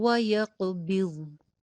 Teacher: واو پہ ہونٹ گول کیجئے اور ضاد کی بھی موٹی ادائیگی کیجئے، قاف کی بھی موٹی ادائیگی کیجئے